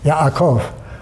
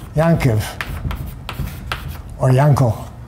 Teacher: This glottal stop is realized as a nasal